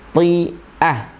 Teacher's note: banyak yang bacanya ti'ah padahal ini adalah hamzah, ti'ah ya. Nah, kesalahan di situ yang banyak terjadi.